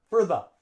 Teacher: Now, we don't say for. We don't use the full vowel sound for the preposition for. We use schwa.